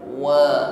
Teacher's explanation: Diawali dengan huruf waw, sempurnakan pengucapannya, himpun bibir ke depan. Wa, ya, bukan wa.